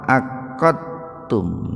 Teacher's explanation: Itu bukan qalqalah, tapi idgham mutaqaribain. Itu disebut mutaqaribain itu karena huruf dal dengan huruf ta itu dekat, Pak. Jadi membacanya dimasukkan ke ta itu.